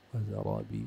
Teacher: را أعلى مراتب التفخيم